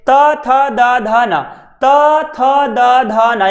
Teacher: आपकी जो जीभ है वो दांतों के ठीक बीचों बीच लग रही है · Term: दंतमूल